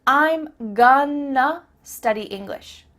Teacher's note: I'm gonna study English means I'm going to study English. That word to simply becomes a.